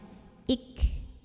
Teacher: Jadi setelah ik ya, tidak hanya sampai ik, tidak hanya tertahan suaranya, enggak hanya syiddah, tapi ada angin yang keluar setelahnya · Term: hamas